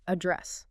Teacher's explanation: with the stress on the second syllable, remember, not like a mailing address